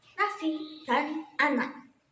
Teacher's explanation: bunyi yang dihasilkan dengan menutup aliran dalam mulut itu menggunakan ujung lidah serta gusi, lalu mengeluarkannya melalui rongga hidung. Pada konsonan ini dilambungkan dengan huruf N.